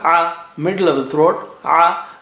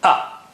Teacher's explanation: Ain has a sound, a, middle of the throat, a, whereas Hamza is from the bottom or the edge of the throat